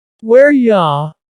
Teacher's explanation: We just changed it to ya, not you, but ya.